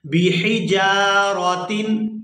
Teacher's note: حا کو حلق سے اچھی طرح سے ادا کریں گے